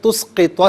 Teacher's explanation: سین کو باریک پڑھنا ہے، اس کو سواد نہیں پڑھنا، ٹھیک ہے، پر نہیں پڑھنا۔